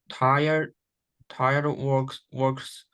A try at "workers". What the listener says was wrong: Workers, my dear, ERS. Workers, my dear.